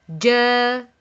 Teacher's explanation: It's a middle tongue letter. It's emitted from the middle of the tongue, touching the roof of the mouth, which is opposite to it.